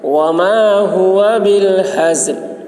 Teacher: زا کی آواز سخت ہوگی اور لام ظاہر ہوگا ٹھہرتے وقت